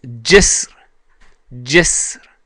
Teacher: It might be hard to hear the ra at the end of that word, but it's there.